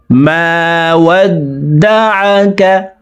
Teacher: আইনকে হালুকের মধ্যখান থেকে উচ্চারণ করব কারণ আইনের মাখরাজ হালুকের মধ্যখান থেকে হবে